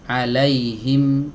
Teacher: setengahnya ada disini di dua bibir setengahnya lagi ada di Pangkal hidung atau rongga hidung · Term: huruf mim